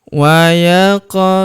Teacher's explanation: Huruf qof kita pantulkan atau kita qalqalahkan karena berharakat sukun